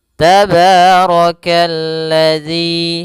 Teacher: rnya dibaca tebal karena dia ro berharakat fathah